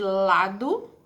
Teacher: E consoante lateral eu tenho 2. Uma que é considerada dental alveolar, que seria o L de lado.